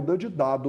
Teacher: a língua bate no dente Então ela é uma consoante dental